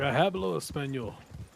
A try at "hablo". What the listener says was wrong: Hablo. There's no H. You don't pronounce the H. Yes, you did. You hablo, like a habanero.